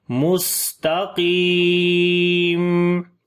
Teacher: سین کے اوپر صفت صفیر سیٹی کی آواز آئے گی, صفت ہم سانس کو جاری کریں گے, اور صفت استفال یعنی باریک پڑھیں گے, تا کو بھی باریک پڑھیں گے, قاف کو موٹا پڑھیں گے, لمبا بھی کریں گے, یا مدہ ہے, اور جب رکیں گے تو 2 زیر ختم ہو جائیں گی, یہاں پر جزم آ جائے گی, تو پڑھیں گے مستقیم.